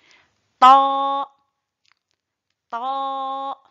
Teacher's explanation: Le ta sort de l'extrémité de la langue en s'appuyant sur la racine des incisives supérieures.